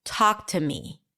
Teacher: Talk is the primary stress here. T is reduced to a schwa.